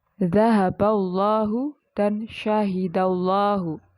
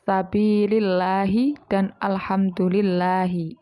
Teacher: lafaz Allah yang didahului dengan harakat kasrah lah itu dibaca tarkik atau tipis